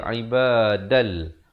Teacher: Asalnya ibadan, tapi bila datang lam jadi ibadal. Ibadal terus masuk di dalam lam tanpa didengungkan. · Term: tanpa dengung